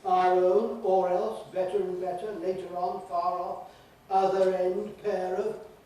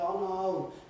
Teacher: All these expressions, if you leave the [r] out, you’ll sound very odd, artificial, unusual, because native speakers just don’t do that. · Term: linking [r]s